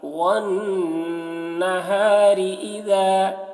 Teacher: نون مشدد ہے تو نون میں غنہ کریں گے اور را کو باریک پڑھیں گے